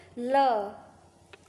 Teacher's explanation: जीभ के दोनों ओर से हवा निकले उसको बोलते हैं पार्श्विक व्यंजन